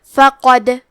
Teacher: کلمت فقد میں قاف کو موٹی آواز میں پڑھیں گے، دال پہ جزم ہے، تو یہاں دال کا حکم ہے قلقلہ، لہذا ہمیں حرف الدال کو ہلاتے ہوئے یہ کلمہ کو پڑھنا ہے